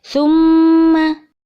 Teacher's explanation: ada huruf mim yang bertasydid nah ini dinamakan bacaan ghunnah untuk membacanya harus didengungkan